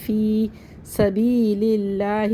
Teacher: وآخرون یقاتلون جلدی جلدی پڑھنا ہے۔ فی یا ساکن سے پہلے زیر یا مد ہے، اس کو ایک الف برابر کھینچ کے پڑھیں گے